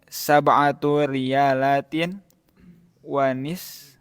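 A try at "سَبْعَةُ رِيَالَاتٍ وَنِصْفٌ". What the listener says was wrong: Wanisfun itu salah tasdidnya ya. Ya, itu harusnya bukan tasdid ya. Sukun ya, nisfun. Kam samanu hadal kitabi samanuhu sab'atu riyalatin wa nisfun.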